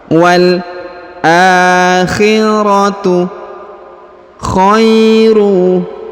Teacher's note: huruf alif di atasnya terdapat alif kecil, maka huruf a dipanjangkan 2 harokat.